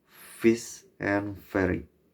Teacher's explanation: labiodentals, formed with the bottom lip and top teeth